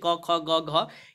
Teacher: इसमें कंठ और जीभ के निचले भाग से आपको उत्पन्न होता है, तो ये कंठ्य ध्वनियाँ कहलाती है